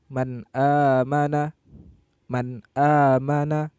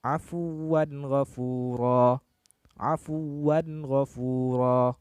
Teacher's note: maka bacaan tersebut dibaca secara jelas dan tidak berdengung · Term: hukum izhar